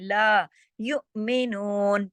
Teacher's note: तुनज़िरहुम ला, ला पूरा अदा करना है इसको, ला नहीं, लाम अलिफ ज़बर ला के साथ है ना, पूरा इसको खींच के पढ़ते हैं, ला युमिनून, थोड़ा झटका दिया हमज़ा की वजह से